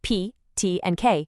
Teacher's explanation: For sounds like P, T, and K, you're going to feel that sharp little puff of air. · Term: unvoiced sounds